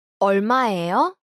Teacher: Notice the rising intonation to indicate a question.